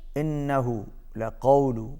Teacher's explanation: نون پر تشدید ہے، غنہ ہوگا، آواز ناک میں جائے گی